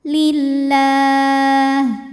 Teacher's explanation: Lam pada lafaz Allah dibunyikan secara tarqiq, sebab huruf sebelumnya barisnya kasrah. Maka cara bacanya tipis, bunyinya lah, pangkal lidah tidak perlu dinaikkan.